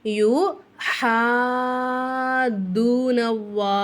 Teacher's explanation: இப்போ ஹாக்கு மேல மத் கொடுத்திருக்காங்க பெரிய மத் கொடுத்திருக்காங்களா அப்ப என்ன செய்யணும் ஹாவ மட்டும் நம்ம அஞ்சு அலிஃப்க்கு நம்ம நீட்டணும்